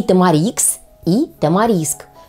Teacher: название тамарикс И кстати говорю правильным ещё будет тамариск то есть правильно говорить и тамарикс и тамариск с ударением на последний слог